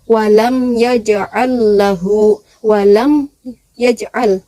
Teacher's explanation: Idhar syafawi yaitu jelas di bibir.